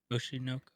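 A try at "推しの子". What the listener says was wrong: Oshinoko. It's not one word. Oshinoko. But no, you said Oshinoko.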